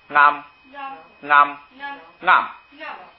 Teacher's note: 前2个呢都是平声高调是吧？它因为它上加字变成高调了，最后一个呢它后边又再后加字撒，调给拽下来了，所以呢是去声